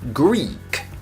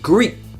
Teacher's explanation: tongue tip that creates the airflow to go right out so what you need to do is only pronouncing the first part of the consonant and never release so that you continue to the next consonant of the next